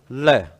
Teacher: वह व्यंजन जिसके उच्चारण में जीवा मसूड़े को छूती है और हवा का प्रमुख वेग जीवा के आसपास या अगल बगल से निकल जाता है पार्श्विक व्यंजन कहलाता है